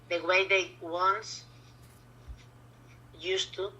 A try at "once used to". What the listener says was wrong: But you need to join these two together. What sound does this word end in? That's it. Once used to.